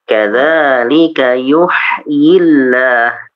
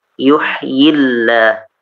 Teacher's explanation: Jadi lam lafdul jalalah atau Allahnya jadi tipis.